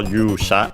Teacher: a Chinese compound accented on the first syllable